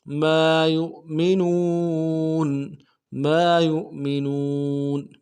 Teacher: یا کو حمزہ کے ساتھ ملانا ہے، یہ حمزہ بشکل واو ہے، جھٹکا دیں گے